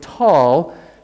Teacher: the word tall the tea is aspirated at the beginning of a word with a little H sound